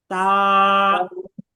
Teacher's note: জিহবার আগাটাকে ওই উপরের দুই দাঁতের গোড়ার সঙ্গে লাগান। লাগিয়ে তারপর উচ্চারণ করেন।